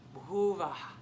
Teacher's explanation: It's almost just like a little breathy poof at the end.